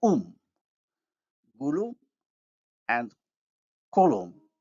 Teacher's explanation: the suffix agrees in backness and rounding with the stem vowel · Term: vowel harmony